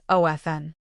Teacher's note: ofn with a silent T is still considered the more traditional standard.